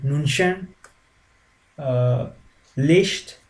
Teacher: the mix of ch and sh at the throat region. So it's I mean, you can't give an equivalent in English language for this sound. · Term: unique German sound